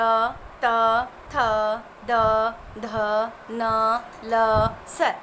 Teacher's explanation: अब देखिए र, त, थ, द, ध, न, ल, स इनका उच्चारण स्थान दंत होता है। यानी दांतों की सहायता के बिना हम इनको नहीं बोल सकते